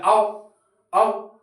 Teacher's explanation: या औ औ तो तब भी आपको गोल करनी है होठ बिना गोल किए होठों की सहायता के आपका औ नहीं निकलेगा और अंदर से आवाज कंठ से आ रही है ओ अंदर